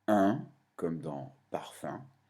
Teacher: Il existe une quatrième voyelle nasale, un, comme dans parfum.